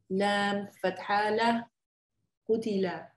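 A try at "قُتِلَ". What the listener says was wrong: Excellent.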